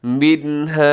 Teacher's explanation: یہاں غنہ نہیں کرنا، آواز کو ناک میں نہیں لے جانا، تیزی سے پڑے گا